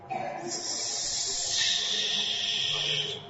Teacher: must practice it seriously hissing sound [Music] that's an example of a hissing sound in which there's no movement of the tongue or lips